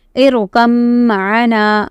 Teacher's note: And mim mushaddad, so there should be a gunna in it.